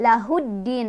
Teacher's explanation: Cara bacanya, alif lamnya tidak dibaca, melainkan kita langsung masukkan ke huruf syamsiyahnya yaitu ke dalnya ya. Jadi lahuddin, alif lamnya nggak dibaca. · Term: alif lam syamsiyah